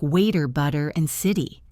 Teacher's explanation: In American English, when AT is between two vowels, it often sounds like a soft D or a flap.